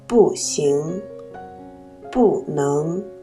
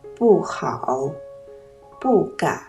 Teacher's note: 不字在1、2、3声音节前读字的本音4声不 ，在4声音节前读2声不，在词语中间读轻声不。让我们再来读一读。小宝宝要睡觉，晨波吹，风不吹，浪不高，小小船儿轻轻摇，小宝宝啊要睡觉，风不吹，树不摇，小鸟不飞也不叫，小宝宝啊快睡觉，风不吹，云不飘，蓝蓝的天空静悄悄，小宝宝啊好好睡一觉。让我们再来听读一篇小短文吧，注意不字的读音。妈妈的爱，王清秀。妈妈的爱像草原，我是小羊，怎么跑也跑不到边。妈妈的爱像蓝天，我是小鸟，怎么飞也飞在里面。本篇小短文中的生词有妈妈、妈妈、爱、爱、草原、草原、羊、羊、蓝天、蓝天、鸟、鸟、跑、跑、飞、